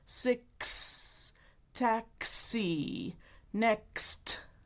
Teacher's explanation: On the velum /k/ /k/. Release the air, move the tongue forward /s/. Create friction. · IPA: /k/ /s/